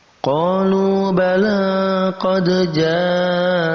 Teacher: Ini mad tabi'i bertemu dengan hamzah dalam satu kata. Ini masuk dalam kategori mad wajib muttasil. Mad wajib muttasil. Kita baca 4 sampai 5 harakat.